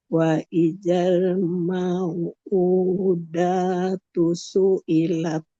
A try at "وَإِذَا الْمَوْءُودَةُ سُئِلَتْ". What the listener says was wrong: Da-nya tidak boleh panjang. Datu, su, ilat.